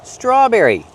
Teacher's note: We see the tr together making the ch- sound like train and truck together. S straw make the r sound with the voice not straw but straw.